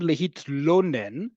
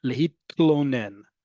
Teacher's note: Ani tzricha, and instead of saying the verb lehitlonen, which is a hard sound to say if you're a native English speaker, because we don't have many words that have tla, right? No vowel between t and la.